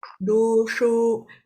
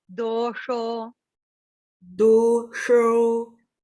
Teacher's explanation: Make sure you get the dosho, tongue back, cerebral letter.